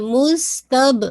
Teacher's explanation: با پہ آپ کا کوئی ایئر باہر نہیں آئے گی کیونکہ یہ بھی قلقلہ کا لیٹر ہے